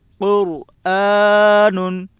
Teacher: رائے ساکنہ سے پہلے پیش ہے، اس لیے رائے ساکنہ پر ہوگی